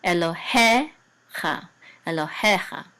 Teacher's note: The trope is over the he, so the accent is on he.